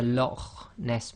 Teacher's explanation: in Scottish you've got the Lo Ness monster so they do a bit of grinding of the throat there